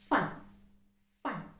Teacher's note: it is a voiceless consonant it's a labiodental fricative